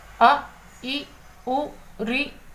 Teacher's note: इनके उच्चारण में बहुत कम समय अर्थात 1 मात्रा का समय लगता है, इसलिए इन्हें ह्रस्व स्वर कहते हैं।